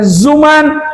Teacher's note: Kalau zuman gigi bertemu dengan ujung lidah